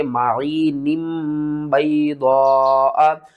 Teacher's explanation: تنوین کے بعد اگر اگلا حرف با ہوگا تو ہم نون کی آواز کو میم کی آواز میں بدل کر پڑھیں گے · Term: اقلاب